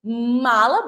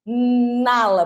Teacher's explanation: meus lábios se tocaram então eu tenho a consoante M